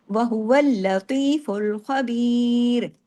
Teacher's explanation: सख्ती से लाम को जोड़ना है, लाम पे तशदीद है, डबल लाम है। पहले हुवल और फिर लतीफ, लाम 2 दफा है ना पढ़ने में।